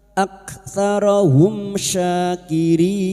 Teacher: Idhar syafawi. Mim sukun dibaca jelas tanpa mendengung.